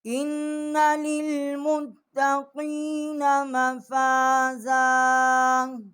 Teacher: حمزہ کو ہم نے نون کے ساتھ مشدد کیا ہے اور یہاں ہم نے غنہ کیا ہے۔ لام کو ہم نے تا کے ساتھ جو ہے وہ مشدد کیا ہے۔